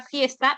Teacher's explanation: F es un sonido labiodental, fricativo